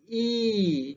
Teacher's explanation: Jadi lidah itu terletak di atas rongga mulut, jadi ruang rongga mulut itu menjadi sempit.